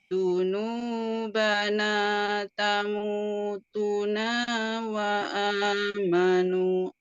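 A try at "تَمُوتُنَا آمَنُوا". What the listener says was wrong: Naknya pendek, kemudian amanunya gak ada wa-nya. Gak ada.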